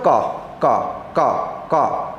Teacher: अब जब बोलो का का का का, कोई कंपन नहीं हो रहा है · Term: अघोष